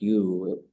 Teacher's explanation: the you part, a high tone you, works in a lot of storytelling